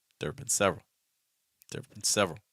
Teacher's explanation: you want to make sure you're going low enough on the been sound